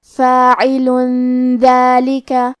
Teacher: کلمت فاعلن میں آخری میں لام پہ تنوین پیش ہے، پھر حرف الدال ہے، دال حروف الاخفاء میں سے ہے تو ہم یہ حکم کو غنہ کے ساتھ ادا کریں گے